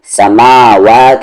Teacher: میم کو بھی کھینچیں گے کیونکہ اس کے ساتھ کھڑا زبر ہے، سوری اس پر کھڑا زبر ہے.